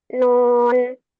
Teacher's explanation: Nunnya sukun sukun asli. Am nun ini pun dibacanya enam harakat karena dia mad lazim dan mad lazimnya yang harfi mukhaffaf. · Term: mad lazim harfi